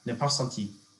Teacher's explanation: You barely need to say the R at the end of that.